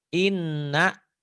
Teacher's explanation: Nun bertasydid gunnah ya huruf guna ada 20 dan mim bertasydid bacanya dibaca double ditahan dan dengung ke hidung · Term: huruf ghunnah, huruf gunnah